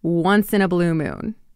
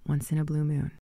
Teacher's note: Notice how I do not separate once in a blue moon. It sort of sounds like it's one word